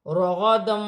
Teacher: دو زبر کی تنوین کے بعد واو مشدد آ رہی ہے، واو مشدد حرف یرملون میں سے ہے، تنوین میں غنہ بھی کیا جائے گا، ملا کر بھی پڑھا جائے گا